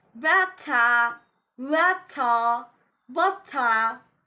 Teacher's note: you need to use AH sound instead of pronouncing ER sound. You need to pronounce it like water, water with AH sound.